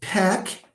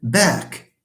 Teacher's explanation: what is this feature feature it's the feature of voicing because p and b share everything except for voicing they share the place they share orality because they are not nasal